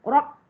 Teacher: Kalau baris atas rob, memang dia tebal lah. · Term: sifat tebal